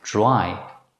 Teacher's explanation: in English, the letter combination dr is pronounced as one consonant dr, as in the English word dry.